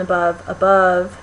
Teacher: the first vowel in above is really short and kind of quieter it's just a little less prominent the second bowel and above above it's longer a little louder